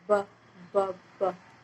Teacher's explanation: लेकिन ब जो है उसमें आपको वाइब्रेशन फील होगा।